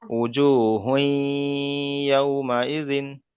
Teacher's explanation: তারপরে এখানে আরেকটা কায়দা এসছে, ওয়াও সাকিনের ডান দিকে জাবার এসছে, এটাকে ওয়াউলিন বলা হয়। ওয়াউলিনকে নরম আওয়াজে তাড়াতাড়ি পড়তে হয়, টান দেওয়া নিষেধ। · তানবিনকে ইয়ার সাথে মিলিয়ে একালিপ পরিমাণ গুণনা করে পড়তে হবে, একে ইদগামে নাখিস বলা হয়।